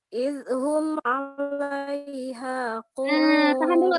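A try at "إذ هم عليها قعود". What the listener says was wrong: Tahan. Jadi jangan dulu dilepas ya sebelum menginjak huruf H. Idhum ya. Jangan dulu dilepas lidah dari ujung lidah dari ujung gigi seri atas sebelum menginjak ke huruf H.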